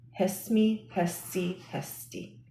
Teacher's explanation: So the singular conjugations, those are going to be hesmi, hesti, hesti. So the two consonants of the root, the laryngeal and the S, have a short E inserted between them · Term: full grade